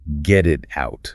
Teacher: Your vocal cords actually vibrate continuously through the entire phrase.